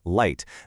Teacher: the very tip of your tongue presses up against that little ridge right behind your top teeth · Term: L sound